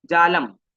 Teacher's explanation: मैं म को बिल्कुल भी स्ट्रेस नहीं करूंगा बोलते छोड़ दूगा क्योंकि म आधा है जालम ऐसे नहीं बोलूंगा मैं क्या बोलूंगा जालम तुरंत छोड़ दूंगा